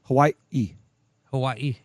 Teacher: it's actually an official consonant in the Hawaiian language it represents what's called a glottal stop